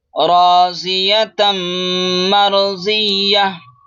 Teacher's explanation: ता को मीम में इदगाम करेंगे, गुन्ना और इख्फा दोनों करेंगे, थोड़ी देर आवाज को नाक में छुपाएंगे